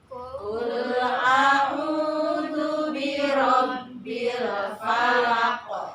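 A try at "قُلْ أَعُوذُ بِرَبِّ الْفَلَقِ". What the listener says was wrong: Ya, jadi kul ya, qi itu qi ya. Bukan kul itu kaf. Ya, a'udzu pakai titik jadi zu. Qul a'udzu birabbil falaq.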